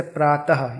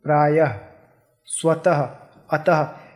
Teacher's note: जब इसका उच्चारण होता है तो ह की ध्वनि निकलती है मुंह से, जैसे प्रातः यानी कि मॉर्निंग, प्रायः, स्वतः, अतः, इन सब शब्दों को जोर दे के बोलने के लिए यहाँ पे हम विसर्ग लगाते हैं।